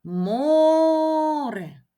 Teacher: Ми чуємо що наголос падає на голосний звук О бо його ми вимовляємо більш протяжно Отже наголошеним буде саме звук О який знаходиться в першому складі